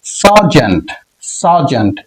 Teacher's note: সাউন্ড দিয়ে উচ্চারিত হয় উচ্চারিত হতে পারে ফর এক্সাম্পল সারজেন্ট সারজেন্ট এখানে ই এর উচ্চারণ আ এর মত অর্থাৎ আকার একটু দীর্ঘ করে একটু দীর্ঘভাবে উচ্চারিত হবে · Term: দীর্ঘ আ সাউন্ড